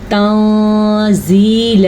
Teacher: تنزیل، نون ساکن کے بعد زا آیا ہوا ہے، زا حروف اخفا میں سے ہے تو نون ساکن کے اوپر ہم اخفا کریں گے، یعنی کہ نون کی آواز کو کسی حد تک چھپائیں گے بھی اور غنہ بھی کریں گے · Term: نون ساکن کا چھپانا